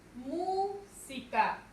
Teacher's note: Su mayor fuerza de voz es mu.